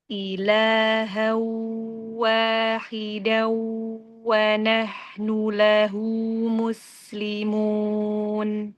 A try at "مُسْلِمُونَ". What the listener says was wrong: Tarik lagi ya bibirnya. Muslimun. Jadi kan nggak monyong tuh sin.